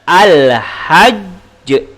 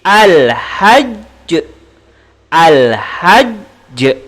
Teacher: Karena jim termasuk huruf qalqalah. Dan ketika waqaf, karena jim bersabdu, maka disebut dengan qalqalah akbar.